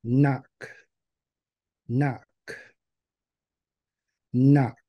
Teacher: And if you notice here, you see on the I on the end is underlined, which signifies that it's a whispered vowel. So it's barely audible when you say it.